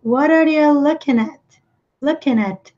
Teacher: Como não se pronuncia o G, o som do N acaba emendando aqui com o A.